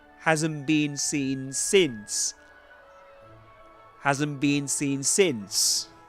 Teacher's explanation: Seen since. Seen is pronounced with a long E sound, but since with a short E sound.